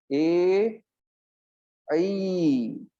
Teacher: कंठ तालु, ए ऐ, ये दोनों ही दीर्घ है।